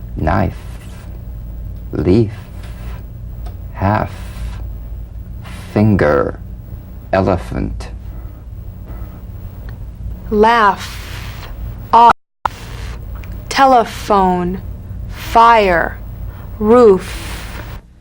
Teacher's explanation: the unvoiced fricative labiodental upper teeth to lower lip just like the V now feel the V then turn off the voice and continue